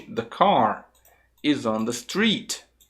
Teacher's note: The fica reduzido, car fica mais forte.